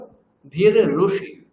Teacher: তারপর রিকারকে আমরা রু বলবো, তাহলে ভীর রুষি